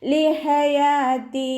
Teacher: സൗണ്ടിന് ഹംസയായി പോവാതെ ശ്രദ്ധിക്കുക. യാൻ്റെ കൂടെ അലിഫ് മദ് വന്നു 2 കൗണ്ട് നീട്ടിക്കൊടുക്കുക. താക്ക് അവസാനത്തിൽ യാമദ്ദാണ് വന്നിട്ടുള്ളത്, 2 കൗണ്ട് നീട്ടി നിർത്തി കൊടുക്കുക കേട്ടോ.